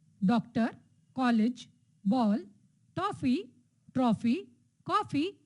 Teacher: यह ध्वनि आ और ओ ध्वनि की मध्यवर्ती ध्वनि है, जैसे डॉक्टर, कॉलेज, बॉल, टॉफी, ट्रॉफी, कॉफी आदि। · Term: औ ध्वनि